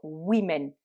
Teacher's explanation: Donc, comme dans man, men, le A se transforme en E entre le singulier et le pluriel, mais au pluriel, les femmes, le O dans la première syllabe va se prononcer I. Donc, on va dire women, ce qui veut dire donc les femmes.